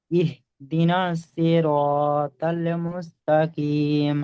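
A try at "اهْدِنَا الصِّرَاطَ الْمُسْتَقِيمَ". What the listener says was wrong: হ্যাঁ, তাল বলবেন না, এটা তল মুস্তাকিম, বলেন। তল।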